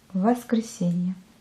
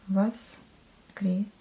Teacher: On dit A, mais on écrit O.